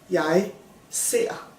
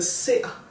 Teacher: It's got a glottal stop on the E, but the R kind of disappears and becomes this sound. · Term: soft type